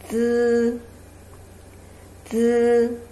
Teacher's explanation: For all of these three pronunciation, you have to bring the tip of your tongue to your front teeth and bring the airflow pass through the crack between your tongue and your teeth · Z, Z. So you feel the tip of your tongue go a little bit up toward your teeth.